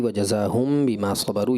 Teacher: یہاں پر اخفاء شفوی کا غنہ تھا